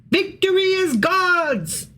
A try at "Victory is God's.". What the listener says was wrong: Nope, you didn't do it right, because it has an apostrophe S on the